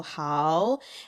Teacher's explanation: the hao and jiu are both third tones. But since they're right next to each other, you're going to say hao as the second tone. So hao. And then go jiu.